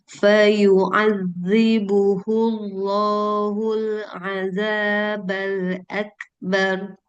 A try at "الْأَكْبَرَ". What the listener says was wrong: Tebalkan ro karena dia wali fathah.